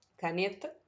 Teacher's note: Então, esse Nê é a sílaba mais forte. Ou seja, as que sobraram são as sílabas átonas, porque elas são fraquinhas.